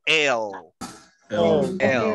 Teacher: Nosotros decimos el, pero los la gente de Estados Unidos hacen la lengua para atrás